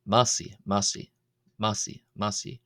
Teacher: Here the i is pronounced long, is pronounced as a long ee vowel